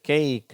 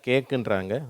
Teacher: ஆங்கிலேயர்கள் உண்மையிலே அது ஐ அப்படின்னு அப்படின்றாங்க நம்ம இந்தியர்கள் வந்து ஏ அப்படின்ற உச்சரிப்போட சொல்றோம்